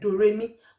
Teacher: So those are the differences between the three: high, neutral or moderate, and the low. Do is low pitch, re is neutral pitch, while mi is high pitch.